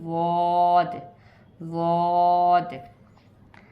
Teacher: अपनी ज़बान को फोल्ड करके उसकी फोल्ड को आप अपनी जो है वो दाढ़ में, अपर जॉस में टच करेंगे और आवाज़ निकालेंगे, वॉद, वॉद।